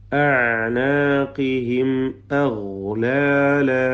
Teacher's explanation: സക്കിനാമീം ഇൽഹാർ ഷഫവി മണിക്കാതെ വെളിവാക്കുക.